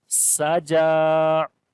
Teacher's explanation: Sin we read in light sound, and also there will be whistling sound. Jim we long due to standing fatha on it.